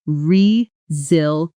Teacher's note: The stress is on the second syllable. And notice that the s in the middle actually sounds like a z. Not resil eent spoken slowly and choppily, but rezel yent.